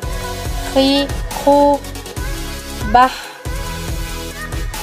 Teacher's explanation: Dikeluarkan dari tenggorokan yang terdekat dari rongga mulut kita. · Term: huruf H